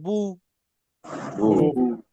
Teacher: পেশ উচ্চারণের সময় ঠোঁট গোল হয়ে যাবে। বা পেশ বু। বা আমার দিকে তাকান, আমার ঠোঁটের দিকে।